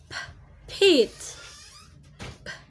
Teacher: in P, T, and K, we're gonna put some aspirated H at the end of the sound